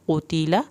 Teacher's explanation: یہاں پر لام کی زبر کو لمبا نہیں کرنا ہے، قاف کو موٹا پڑھ کے قتل۔